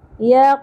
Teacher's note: क़ाफ साकिन पुर भी होगा और कलकला भी होगा